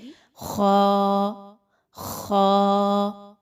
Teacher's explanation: ख जो है वो हलक से ही अदा होता है। और हलक के शुरू के हिस्से से जो मुंह की जानिब है। गौर करें तो बिल्कुल शुरू के हिस्से से आवाज निकलेगी। · تو یہاں پہ خا موجود ہے، اور خا جو ہے وہ حلق سے ہی ادا ہوتا ہے، اور حلق کے شروع کے حصے سے جو منہ کی جانب ہے، غور کریں تو بالکل شروع کے حصے سے آواز نکلے گی